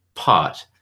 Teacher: I can barely say it without aspirating the P sound, just because it's sort of a part of the rules of the phonology of my language.